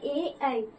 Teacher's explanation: ए का जो उच्चारण स्थान है वो है कंठ तालु